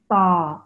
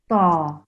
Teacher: Your tongue has to touch the roof of your mouth, ta, against the front teeth.